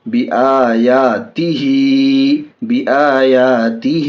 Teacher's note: بی آیاتی ہا کھڑی زیر ہی ہا کے نیچے کھڑی زیر ہے، کھڑی زیر برابر ہے الف حرف مدہ کے، کھڑی زیر کو تھوڑا کھینچ کر پڑھیں گے